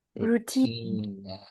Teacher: routine is stressed on the second syllable